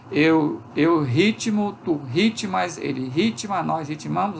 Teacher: é sempre a sílaba anterior que recebe o acento tônico